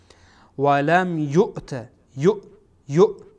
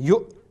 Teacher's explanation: همزه مادامی که این گونه ساکن باشه به گونه ادا میشه که ما باید کاملا تارهای صوتی را ببندیم و از انتهای حلق یا اخیر حلق ادا میشه و در وقتی که این را ادا میکنیم تارهای صوتی باید کاملا قفل بشه، بند بشه.